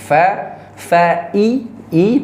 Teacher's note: Bibir bagian dalam bawah bertemu dengan gigi depan atas. Fa fa i. Tarik bibir bawah kita ke bawah.